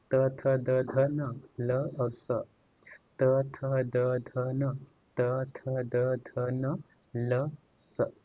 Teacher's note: दंते वर्ग से जिनका उच्चारण दांतों की सहायता से हो, त वर्ग।